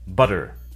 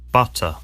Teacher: In the US, they sometimes sound like D, an alveolar tap instead of T, an alveolar stop. This normally occurs in an unstressed syllable between two vowel sounds, or between a vowel and a rhotic sound, like an R sound.